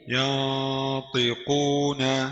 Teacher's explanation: نون ساكنة مخفاة عند الطاء المكسورة بغن حركتين